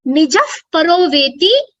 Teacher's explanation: after this visarga, there is a pavarga, which means there is an opportunity for an upadhmaniya pronunciation